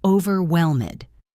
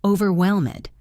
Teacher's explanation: in the word overwhelmed, the stress is on the third syllable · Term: word stress